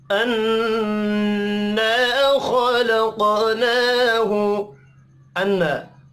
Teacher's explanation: अन्ना नून मुशद्दद पर गुन्ना करेंगे। अलिफ मद्दा को एक अलिफ के बराबर खींच कर पढ़ना है।